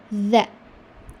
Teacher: So when you are pronouncing when you're pronouncing zal, it should be za. Your tongue will come out between the two teeth, za. It is not za, it is za.